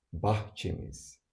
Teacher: But now, we are focusing on the dative case suffix to be attached to this. The vowel of the last syllable of the word is e. E is in the front vowel group. Therefore, we choose a.